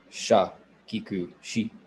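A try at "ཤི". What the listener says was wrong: Make it higher tone though.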